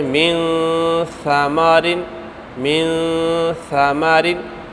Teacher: یہاں پر چونکہ نون ساکن کے بعد ثا ہے تو یہاں پر ہم غنہ کر رہے ہیں